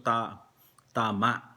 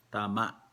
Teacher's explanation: Merong parang may ano sa lalamunan yung last syllable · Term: glottal stop